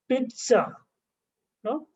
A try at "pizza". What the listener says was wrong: It has to be a long pizza. It has to be pizza. This is the correct form.